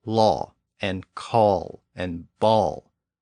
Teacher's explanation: this sound is a bit more rounded than a and o so the lips are more rounded when we pronounce this sound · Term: aw sound